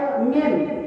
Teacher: Yang kedua mim, mim tadi juga kita sudah pelajari dia ada makhrajnya di 2 bibir, ya. Mim 2 bibir ini belum sempurna hurufnya, lalu disempurnakan dengan suara dari hidung. Contohnya jadi di sini ada suara dan di hidung juga ada suara.